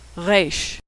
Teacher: Now most Americans pronounce it like the R in road, but Israelis pronounce it as more of a guttural sound.